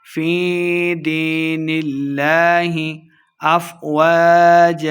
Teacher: یا مدہ ہو رہا ہے، 2 حرکات لمبا کر کے پڑھیں گے۔ فی دین اللہ افواجا، وقف کرنے کی صورت میں ہم نے ایک زبر کو حذف کر دینا ہے، ایک زبر کے ساتھ الف پڑھتے ہوئے ہم نے وقف کرنا ہے۔